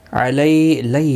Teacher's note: یا لین ہے، تھوڑا نرمی کے ساتھ کھینچ کر ادا کریں گے